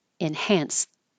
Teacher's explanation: technically it's a t at the end but you won't hear it